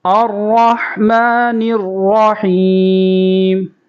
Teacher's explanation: ہا کے اوپر جزم ہے، اور ہا کی آواز بریک نکال لیں گے حلق سے۔